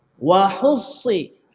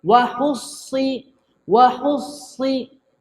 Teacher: huruf sad ni dia ada angin sikit, hamas. Hamas tu bermakna angin.